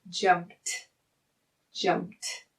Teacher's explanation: I don't feel any vibration, so that means this is an unvoiced consonant, and we're going to end in the T sound.